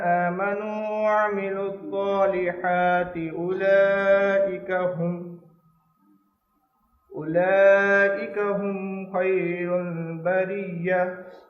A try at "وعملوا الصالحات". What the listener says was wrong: اس کو پھر پڑھیں ذرا، ان الذین آمنوا، یہ جو وعملوا الصالحات ہے اس کو فائن کریں، سواد آپ کی کلیئر نہیں ہے دوبارہ.